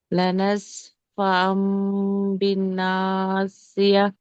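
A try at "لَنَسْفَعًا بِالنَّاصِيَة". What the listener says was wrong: అలీఫ్ మద్ తక్కువ తీస్తున్నారు మీరు. రెండు సమానంగా వచ్చేటట్టు చూడండి. లనస్ ఫా అమ్ బిన్ నాసియా.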